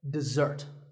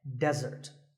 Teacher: this is dessert notice that the first syllable is dip and the second starts with a Z sound we stress the second syllable